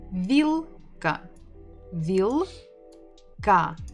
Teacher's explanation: We stress the first syllable.